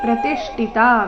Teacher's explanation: ಪ್ರತಿಷ್ಠಿತ ನಲ್ಲಿ ತಿ ನಂತರ ಅರ್ಧ ಶ್ರ ಪೂರ್ತಿ ಠಿ ರಸ್ವ ಮಹಾಪ್ರಣ ಇದೆ ಇಲ್ಲಿ ಪ್ರತಿಷ್ಠಿತ ಬೇಡ ಪ್ರತಿಷ್ಠಿತ ಠಿ ಚೆನ್ನಾಗಿ ಸ್ಪಷ್ಟವಾಗಿ ಕೇಳಿಸೋ ರೀತಿ ಬರಬೇಕು ಪ್ರತಿಷ್ಠಿತ